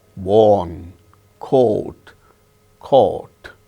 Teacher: So, in all these words we have the sound O, elongated O, which we have in our Indian languages.